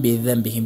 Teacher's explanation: بعد از ميم ساكن حرف با واقع شده اخفای شفوي